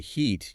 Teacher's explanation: you make a voiceless e shape with just air immediately followed by the voiced e sound